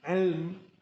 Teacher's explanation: Bila mim itu dimatikan, ilm, bibir kita terus tutup sebab nak mewakili sebutan mim